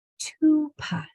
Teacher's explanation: So this word is ooh, tupa, tupa, kind of like tuba, but tupa. The P is also voiceless, only air.